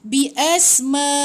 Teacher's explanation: Bi asma'ihim, ma panjang 4 atau 5 harakat sebab ombak bertemu dengan hamzah.